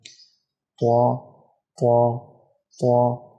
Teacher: طو کو ادا کرتے وقت بعض لوگوں سے غلطی ہوتی ہے کہ وہ ناک میں آواز لے جاتے ہیں، ناک میں آواز نہیں جانی ہے